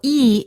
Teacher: e is a front vowel because the front part of the tongue goes up in front of the mouth